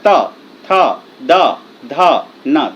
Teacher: त थ द ध न, दांत से टकरा रहा है